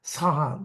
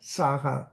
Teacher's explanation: Saha with an aspirated sound rather than the unaspirated Saha